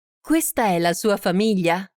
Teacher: Note the rising intonation of the sentence to indicate that it's a question.